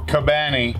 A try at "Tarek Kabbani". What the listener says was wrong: that's the English way to pronounce it. It's Tarek, you know, like your typical Arabic way. Kabbani. Yeah, you pull on the B. Double B, baby, not double D's.